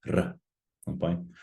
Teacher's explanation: So in Te Reo Māori, all of our R's, I suppose, are rolled.